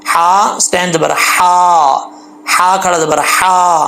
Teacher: اس ہا کا تعلق حلق سے ہے، سینے کی طرف نہیں ہے، تو اس کو باریک پڑھیں گے